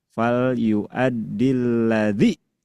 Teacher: alif wasal itu kalau disambung dengan huruf sebelumnya dia harus menghilang, meniadakan diri, tidak diucapkan dilewat.